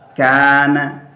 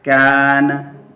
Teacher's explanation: Kalau tipis contohnya kana, tipis. Alifnya jadi tipis.